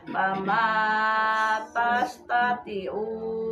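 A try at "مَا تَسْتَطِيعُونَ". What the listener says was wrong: panjang tina tastati'una sorpau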